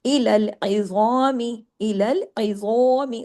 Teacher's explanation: मीम को नहीं ना खींचना है और ना ही मोटा करना है